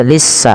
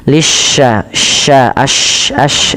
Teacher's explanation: Kemudian pada lafal shin lisya ya, lisya tasydidkan sinnya, tapi hati-hati jangan sampai terbaca dengan sin, jangan dibaca lissa tapi lisya, sya pakai y gitu ya. Nah, ini untuk shin itu cara membacanya adalah di tengah lidah kita